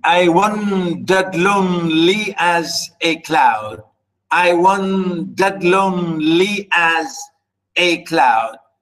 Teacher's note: unstressed stress unstressed stress unstressed stress